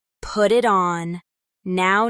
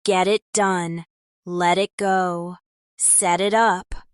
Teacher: in put it on, the T links to the vowel in it, making it sound like put it on. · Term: Linking with t